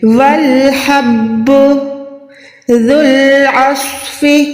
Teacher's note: زال کے بعد یہ جو واو اور الف ہے ہم نے ان کو ادا نہیں کرنا. زال لام پیش ذل، ٹھیک ہے، زول نہیں ہے.